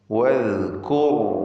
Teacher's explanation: വദ്കുർ റാഇൻ്റെ ഉച്ചാരണം പ്രത്യേകം ശ്രദ്ധിക്കുക, തഫ്ഖീം ചെയ്യണം. റാഇനെ തടിപ്പിച്ച് സ്വരഭാരത്തോടെ ഉച്ചരിക്കുക. റാഇനും അല്പം റഖാവ അഥവാ തവസ്സുത്ത് എന്ന സിഫത്ത് ഉള്ള അക്ഷരമാണ്.